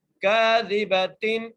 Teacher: آگے کاف کو ایک الف مقدار کھینچ کے پڑھیں گے اور دال کو بغیر کھینچے، با کے اوپر زبر ہے، تا کے نیچے دو زیر ہیں.